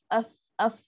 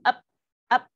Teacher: Menyalahi sifat huruf fa. Fa ada angin yang lembut yang keluar.